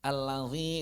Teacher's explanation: mengalirkan suara dengan hidung mengalirkan suara dari roga hidung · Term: gunah